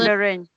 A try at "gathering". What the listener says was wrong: The G at the very end, gathering. I think you kind of sometimes you end it to gather.